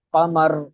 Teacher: را ساکن ہے اور وقف کیا جا رہا ہے تو اس سے پہلے پیش ہے یا پھر زبر ہے تو را کو پر پڑھا جائے گا، را کو موٹا پڑھا جائے گا